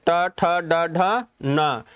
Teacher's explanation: से इसका स्थान क्या हो गया मुर्धा ट ठ यानी कि दोनों दांतों से लगती हुई और ऊपर की तरफ जीव उठ रही है झटके से उठ रही है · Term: मुर्धन्य